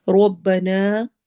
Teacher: نا پر مد ہو رہی ہے، مد منفصل ہے، الگ ہو رہی ہے، اس وجہ سے یعنی الف مدہ الگ ہے اور حمزہ الگ ورڈ میں ہے۔